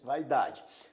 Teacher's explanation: Observe que na palavra vaidade a primeira sílaba contém um diton a vogal a e a semivogal i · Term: ditongo